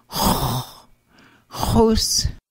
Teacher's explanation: X wedge with raised W is pronounced as a guttural H with rounded lips in the back of the throat